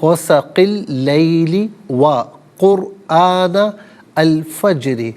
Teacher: قرآن میں را ساکن ما قبل کاف پر پیش، را ساکن کو پر کر کے پڑھا جائے گا